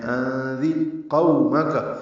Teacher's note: انذر قومک، قاف پورا اور یہ واولین ہے، میم کاف جلدی پڑھیں گے۔